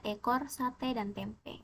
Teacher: vokal e vokal depan sedang atas tak bundar